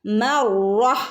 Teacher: നിർത്തുകയാണെങ്കിൽ നമ്മൾ മർറ ഒരു ഹ സൗണ്ടോട് കൂടെ മർറ എന്ന് പറഞ്ഞ് നിർത്തണം.